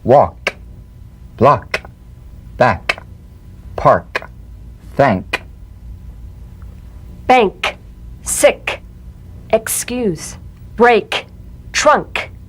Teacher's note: the unvoiced tongue back plosive consonant with the tongue in the GE position let the tongue spring away in the soft unvoiced click of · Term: K drum beat